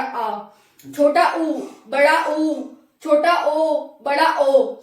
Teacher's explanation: पश्च स्वर में हमारा पीछे वाला भाग उठेगा, जीभ का पीछे वाला भाग